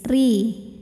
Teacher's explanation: huruf ra dibunyikan secara tarqiq sebab barisnya di bawah yaitu baris kasroh. Maka ra dibaca dengan tipis, ri. Atharihim. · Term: tarqik